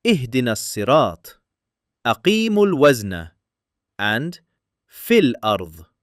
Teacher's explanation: But, between two words in continuous recitation, Arabic never allows two saakins to collide and the Qur'an resolves it in exactly one of two ways. If the first saakin is a letter of madd, its elongation is dropped and we move straight into the next letter, as we saw in ihdinas-siraat.